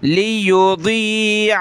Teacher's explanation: ضاد کو جو ہے موٹے حروف میں سے ہے تو اس کو موٹا کر کے پڑھنا ہوتا ہے